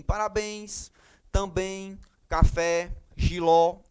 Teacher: vocês vão observar que a sílaba tônica é a última se a sílaba tônica é a última ela é uma oxítona · lembrando que a oxítona, a sílaba tônica é a última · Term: oxítonas